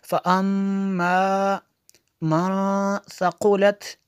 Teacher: मीम शद्दत है इसलिए यहाँ पे गुन्ना होगा